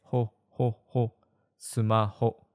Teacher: There is no real F sound in Japanese, so we say ho